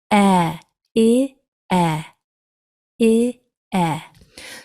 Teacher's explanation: nice and narrow like a smile or a grin e your mouth is open medium with e